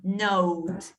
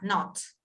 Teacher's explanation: Este es un diptongo. Note. Y este es la O corta.